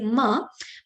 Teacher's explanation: when I say ma, my two lips are coming together